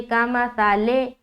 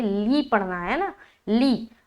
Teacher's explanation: آگے لام میں جو زیر ہے اس کا خاص خیال رکھیں گے کہ آواز مجھول نہ ہونے پائے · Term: معروف